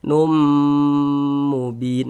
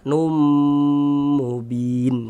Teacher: bunyi tanwinnya dimasukkan ke huruf mim kemudian digunnahkan. Num mubin. Nah, di bagian numnya kita panjangkan sejenak. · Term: idgham bi gunnah